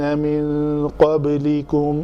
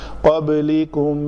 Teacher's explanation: نون کے اوپر اخفاء ہوگا، با پہ قلقلہ ہوگا